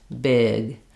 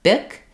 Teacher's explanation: lengthening that vowel is the main difference between a voiced and a voiceless consonant